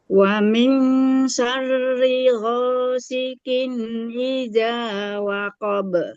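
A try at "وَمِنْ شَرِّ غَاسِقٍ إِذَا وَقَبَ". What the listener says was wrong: Oke, ghasiqin, masih kin. Ghasiqin. Masih catatannya di huruf qaf, masih terdengar qaf ya.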